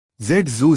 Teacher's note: Z voiced fricative alveolar